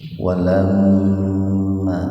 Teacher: mim bertasdid gunnah. Gunnah itu mendengung ya. Tahan dua ketukan.